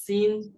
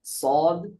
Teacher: সিন হবে পাতলা, সদ উচ্চারণ আওয়াজ হবে মোটা।